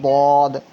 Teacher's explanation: दद का जो मखरज है वो जबान का किनारा है। जबान का किनारा दाल से जब लगता है ना तो वद अदा होता है। · اب جو ہے نا دال ہے اور ضاد ہے، تو بعض لوگ دال میں ہی ضاد کو پڑھ دیتے ہیں، لیکن ضاد کا جو مخرج ہے وہ زبان کا کنارہ ہے. زبان کا کنارہ دال سے جب لگتا ہے نا تو ضاد ادا ہوتا ہے، ضاد. تو دال اور ضاد میں فرق ہے، دال کو باریک پڑھنا ہے اور ضاد کو پر کر کے پڑھنا ہے، دال ضاد اس طرح سے.